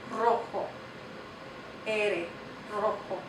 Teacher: At the beginning of a word, the letter ere makes a trilled R sound. Like, kind of like when you were a little kid and you played with little cars and you made the motor go.